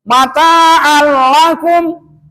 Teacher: kalaulah ke depannya ada huruf mati, maka jangan dipanjangkan alifnya di situ, a-nya. dikarenakan ke depan ada huruf mati. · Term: Idgham bila gunnah